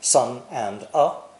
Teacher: if you listen carefully you don't hear the D sound at the end of and